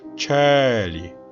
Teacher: 이 첼로 할 때 첼리는 애가 열려 있습니다.